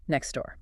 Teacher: Wow, the T is completely gone.